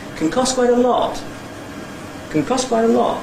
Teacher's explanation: So this, in this environment the [t] is elided as it would be 90% of the time, because it's between the two consonants. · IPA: kəŋ ˈkɒs kwaɪt ə ˋlɒt